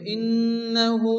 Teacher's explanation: নুনের উপরে তাসদীদ গুণা ওয়াজিব